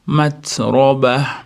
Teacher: Zdan keyin alif mat bor. Za matroba ters sifatini chiqarib, ro'ni yo'g'onligini berib, oxirida toy marbuta bilan to'xtaymiz. Matroba.